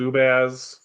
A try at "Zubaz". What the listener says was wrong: Zubuzz. Stop emphasizing the A. Zubaz.